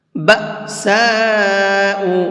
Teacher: من قبلکم مستهم البأساء والضراء وزلزلوا، بأساء، یہاں پر یہ حمزہ ساکن ہے تو اس کو بھی جھٹکے کے ساتھ میں پڑھیں گے، اور یہاں پر یہ بڑا مد ہے تو اس کو 4 سے 5 الف کے برابر کھینچ کر کے پڑھیں گے